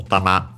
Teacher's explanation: accented usually on the last syllable and will keep its accent if we added another particle like wa or all the other particles but with no it becomes an accented t. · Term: accented on the last syllable